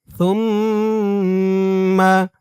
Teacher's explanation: ওয়াজিব গুন্নাহ, কারণ হরকতের পরে মিমের উপর তাসদিদ